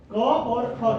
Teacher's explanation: क वर्ण का उच्चारण स्थान और ख वर्ण का उच्चारण स्थान कंठ है और आभ्यंतर प्रयत्न इसलिए इन दो वर्णों कीव संज सवर्ण संज्ञा